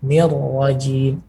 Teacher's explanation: menggunakan ujung lidah ini menempel kepada gusi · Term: huruf ra